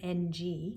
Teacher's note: finally you have the eng otherwise known as an ng and that sound is basically formed where the k sound happens again the back of the tongue going up near that soft palate